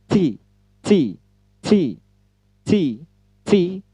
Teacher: Ujung lidah bertemu dengan gigi atas bagian belakang. · Ada angin yang ketut ya, ada letupan angin yang terhimpit